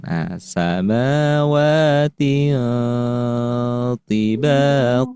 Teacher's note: fathatain atau kasratain bertemu dengan tho. Jadi ditahan dulu, didengungkan.